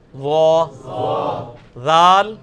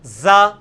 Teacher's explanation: نہیں یہ سیٹی کی آواز نہیں ذال میں آنی چاہیے, یہ نرمی والا ہے, یہ اس کے نیچے آیا ہوا ہے ذال, نرمی کے ساتھ ذال.